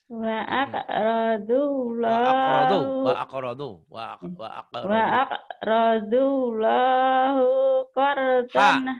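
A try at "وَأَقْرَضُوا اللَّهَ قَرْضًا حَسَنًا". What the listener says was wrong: Bukan hu. Wa aqradullaha ha. Wa aqradullaha qardan hasanan yudha'afu lahum.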